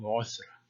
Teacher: the Semkath must have been an interdental Tha here